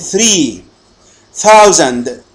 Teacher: sounds are formed with the tongue tip behind the upper front teeth, as in. الأصوات الأسنانية أصوات تتشكل بقمة رأس اللسان خلف الأسنان الأمامية العليا. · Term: dentals